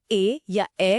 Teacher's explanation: ए या ए का उच्चारण करते समय आवाज का बेस गले से आता है, लेकिन उसे आकार देने के लिए जीभ का तालु की ओर उठना भी उतना ही जरूरी है। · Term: कंठ तालव्य